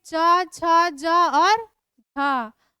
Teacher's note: च वर्ग में च छ ज और थ और ये तालव्य श इन सभी का उच्चारण हमारा तालु से होता है